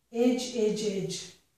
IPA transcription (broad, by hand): ɪdʒ